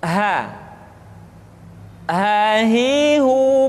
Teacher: dikeluarkan dari tenggorokan yang terjauh